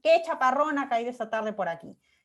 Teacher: El tonema es ascendente al comienzo del enunciado y luego ya baja. · En este tipo de oraciones hay una fuerte subida al principio y desde ahí todo el descenso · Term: oraciones exclamativas